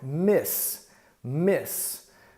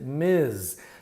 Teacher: The final sound of Miss is an S sound, miss, miss. And the final sound in Ms. is a Z sound. Even though it's written MS period, the abbreviation, we pronounce it Ms.